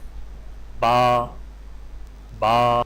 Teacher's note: ہونٹوں کے گیلے حصے کو سختی سے ملا کر باریک آواز میں پڑھیں، یعنی با۔ نیچے تصویر بھی آپ دیکھ سکتے ہیں۔